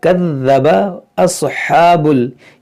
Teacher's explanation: ये स्वाद हुरूफ़ मुश्तलिया मोटा करेंगे, हा, ये हा पर खड़ा ज़बर खींचेंगे और ये हा जो है वस्ते हल्क से अदा होगा जहाँ से आइन अदा होता है।